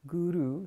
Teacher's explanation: Guru has a slightly rolled R